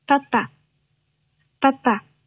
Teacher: 在元音前，它是不送气，或者说呢少量的送气啊，不送气或者少量的送气